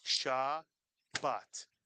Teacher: So, for example, if you put this word up on the screen, Alex, Shabbat, it has two syllables, and each syllable has the same beat to it. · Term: equal beats